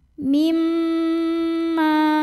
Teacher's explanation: Cara membacanya dengung. Bunyi M-nya tahan sampai ada getaran halus ke hidung. Kurang lebih 2 harokat. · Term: gunnah musyaddadah